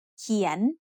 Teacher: เขียน is said with a rising tone because it has a high-class consonant and a live syllable ending